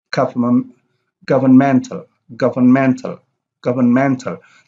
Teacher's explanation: The loudest is mental. And then gov is the second loudest, and vern probably the third loudest, and is the least loudest or the least loud because that's the unstressed syllable. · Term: primary